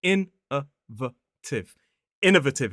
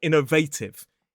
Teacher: Now, a lot of people struggle with the stress on this word. It is on the first syllable.